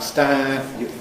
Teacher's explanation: There’s a little bit of nasalization at the end of the vowel. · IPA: [stæ̃…]